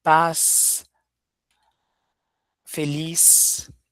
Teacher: Eh, e o Z com som de S, né?